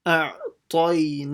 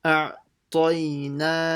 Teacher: see how I only stretched the na and I made everything else short.